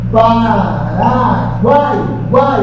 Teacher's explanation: Dá a impressão de que nós temos aqui um pódio desses polígonos, em que você tem uma fraca, sobe para uma forte, desce para uma fraca de novo. O U é uma semivogal, o A é vogal e o I é uma semivogal. Esse é o esqueminha que tem do tritongo, a vogal no meio.